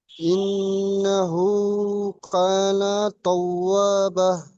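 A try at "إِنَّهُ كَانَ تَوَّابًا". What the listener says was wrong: তাওয়াবাহ বলছেন, এখানে টান হয়নি। অস্তাগফির ইন্নাহু কানা তাওয়াবাও টান দেননি, ঠিক আছে? ওটা টান হয়েছে, বাটা টান হয়নি, ঠিক আছে?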